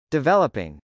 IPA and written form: dɪvˈɛləpɪŋ (developing)